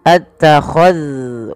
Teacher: hati-hati di dalam melafalkan zal yang sukun, jangan sampai ia dipantulkan